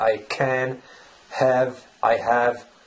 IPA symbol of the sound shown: æ